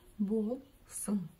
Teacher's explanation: как буква И произносится очень и очень коротко, то ударение будет стоять на слоге вперед, на букве О